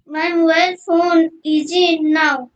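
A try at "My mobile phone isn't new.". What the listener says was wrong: ইজন্ট নাও না, isn't নিউ, NEW হচ্ছে নিউ, নিউ মানে নতুন। উচ্চারণ ঠিক করে করো, দেখে দেখে বলো আবার, চলো বলো, আবার বলো, লাইনটা আবার বলো।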